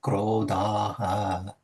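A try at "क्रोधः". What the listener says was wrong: Mahaprana. Krodhaha. Dhaha, not daha. Dhaha.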